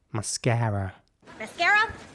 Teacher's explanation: and in american english it's mascara with an ä sound and a quite rounded r towards the end